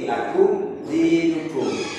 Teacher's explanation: Panjangnya hanya satu ketukan, satu harokat. Jadi tanpa mendengung. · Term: idhar safawi